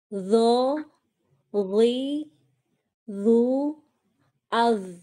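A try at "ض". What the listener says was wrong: Kurang tebal. Ad. Pangkah lidahnya naikkan lagi.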